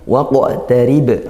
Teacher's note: kalau qaf sukun kita baca qalqalah sughra karena dia di tengah. Yaqtarib, ri ini ra-nya tarqiq tipis, rib ba dibaca sukun dan diwaqafkan maka qalqalah kubra dibaca pantulan kuat.